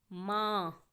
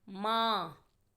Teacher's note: माँ बोलने में मुंह और नाक दोनों से आवाज़ आ रही है आ, इसीलिए हमने चंद्र बिंदु लगाया और शब्द बना माँ। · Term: अनुनासिक